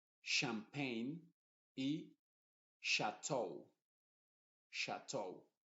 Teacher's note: la ch se está pronunciando como una sh